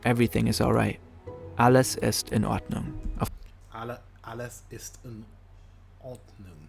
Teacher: In German, sometimes there's a mini pause before each individual word.